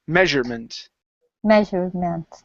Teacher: with the UR, you don't want to say mesure, but measure with an ER sound like you're saying her.